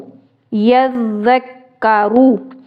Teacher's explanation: रो को पुर करके पढ़ना है क्योंकि रो के ऊपर पेश है और ज़बर से पेश वाले अल्फाज को खींचकर नहीं पढ़ना।